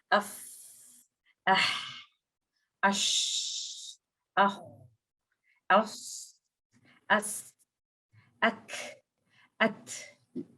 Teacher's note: हम अपनी ब्रेथ को कंप्लीटली रन करते हैं इन लेटर्स की अदायगी के वक़्त। इस तरह से कि आप अपना हाथ अगर अपने मुँह के आगे रखें, तो आप फ़ील भी कर सकते हैं लाइक अफ, अह, अश, अह, अस, अस, अक, अत, इस तरह से। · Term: हम्स